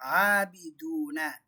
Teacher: Natural மத்து, வாவ் சாக்கினா இருக்குது. இங்கே 2 அலிஃப்க்கு நீட்டணும்